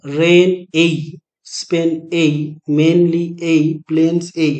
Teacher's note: এই ডিফথাংটা, অর্থাৎ এটা একটা তো ভাওয়েল সাউন্ড, সেই ডিফথাংটা রিপিট হচ্ছে ক্লোজলি পরপর